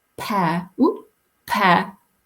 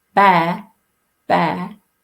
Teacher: note and we know this anyway that P is aspirated so when I say pair pair the tissue paper moves but when I say bear bear it doesn't move